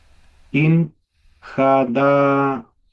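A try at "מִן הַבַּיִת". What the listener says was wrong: Se quería min habayit. Habayit es como con una B fuerte, como de barco. Cuando la B tiene el dagesh, es como barco, bote. Cuando no tiene la dagesh es como una B corta, como vaca, como un poco más.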